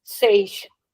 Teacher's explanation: So I'm starting with the sound of so, but I'm ending it with sh.